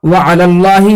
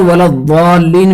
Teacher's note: इन जो है लामों को उन हर्फ मुफख्खम की मुजावरत की वजह से तफखीम के शाइबे के साथ अदा नहीं होना चाहिए, बल्कि बिल्कुल जो है बारीक अदा होना चाहिए